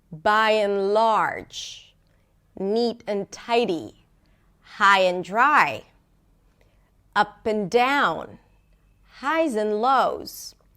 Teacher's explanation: you stress the first word, then you reduce the middle word, right, the conjunction or the preposition, and then you stress the second word. Whereas the second word is usually stressed a bit more by and large, neat and tidy, high and dry, up and down, highs and lows, highs and lows.